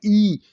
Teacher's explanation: ई जल्दी बोला जाता है, तालु से ही बोला जाता है।